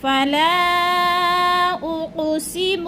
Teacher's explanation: حروف مدہ کے بعد حمزہ دوسرے کلمے میں آ گیا ہے تو مد منفصل. 4 الفی مد ہے، 4 حرکات کے برابر ہم نے اس کو لمبا کرنا ہے